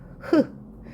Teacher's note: 목청 소리이면서 마찰음인 거